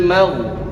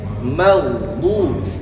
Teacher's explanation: Jangan dipantulkan karena gho bukan termasuk kepada salah satu huruf qalqalah yang mengharuskan bergerak atau memantulkan.